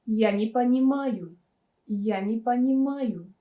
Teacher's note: Е is pronounced as E because it's not stressed.